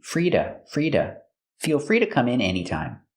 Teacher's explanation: the to is pronounced da with a fast D.